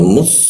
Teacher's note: Sad itu posisinya di ee lidah ee ee ee posisinya di belakang gigi. Lidahnya dilengkungkan di bagian bawahnya sehingga rongga udaranya agak terhambat. Jadi suaranya seperti mus ada desis tapi e agak samar